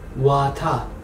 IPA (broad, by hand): wata